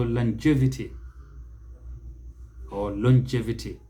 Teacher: the second syllable is the one that receives stress in both cases